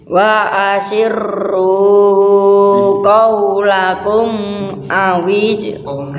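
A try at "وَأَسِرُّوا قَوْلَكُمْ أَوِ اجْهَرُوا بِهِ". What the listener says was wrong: Bukan awijharu bukan, tapi awijharu bih.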